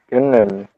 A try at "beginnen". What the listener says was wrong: It's not long I, it's a short I, please. E. There is a double consonant. N. Double N. A double consonant means the vowel before that will be pronounced like I, not E, not beginnen. Beginnen. Beginnen. Short.